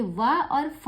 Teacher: आगे देखिएगा दंतोष् की बात करें तो निचले होठ और ऊपर के दांतों से इसका उच्चारण स्थान होता है। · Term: दंतोष्ठ